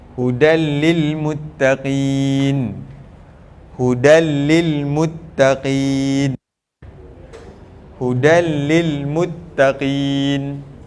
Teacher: dia idgham juga dia masuk juga tapi dia tanpa dengung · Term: idgham Bila Ghunnah